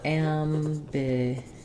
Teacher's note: we stress on the GU syllable